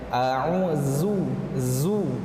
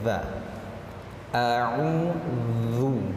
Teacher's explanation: huruf za di sini makhrajnya itu pada ujung lidah, ya, dengan cara mengeluarkan sedikit ujung lidah tersebut. Ujung lidah kita dikeluarkan sedikit.